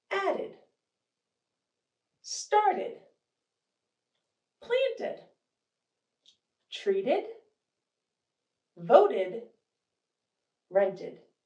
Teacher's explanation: even though it's an ed it sounds like ID